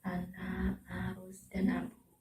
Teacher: vokal A, adalah satu-satunya vokal rendah tengah dalam bahasa Indonesia. Vokal A hanya mempunyai 1 alofon, yaitu A.